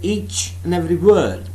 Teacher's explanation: the conjunction and it has not been stressed